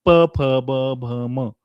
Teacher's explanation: यांचा सर्वांचा उच्चार औष्ट होतो ओठां एकमेकाला स्पर्श होऊन होतो · प, फ, ब, भ, म यांचा सर्वांचा उच्चार औष्ठ्य होतो. ओठांना एकमेकाला स्पर्श होऊन होतो. म्हणून हे एका वेगळ्या गटामध्ये ठेवलेत आणि सगळ्यात महत्त्वाचं या सर्व व्यंजनांचा उच्चार करताना एकतर फुफ्फुसातली हवा बाहेर सोडली जाते.